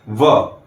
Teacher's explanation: जब भी आप व का उच्चारण करते हैं तो आपके ऊपर के दांत निचले होठों को टच करते हैं। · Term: दंतोष्